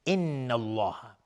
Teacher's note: نون مشدد دو حرکت غنه میدیم، لفظ جلاله مفخم یا تفخیم هست چون قبلش فتحه اومده.